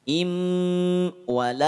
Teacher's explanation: masukkan bunyi nun sukun pada huruf mim leburkan nun sukun pada huruf mim disertakan dengan tahan dua harakat dan dengungkan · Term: idgham